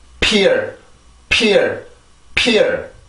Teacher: 무성음. 그러면 입술을 막고 공기를 내보내는데 성대 소리만 빠지면 돼요. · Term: P 발음